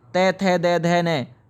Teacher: ये त वर्ग जो होता है ये दांत से जुड़ा हुआ वर्ग है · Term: दंत्य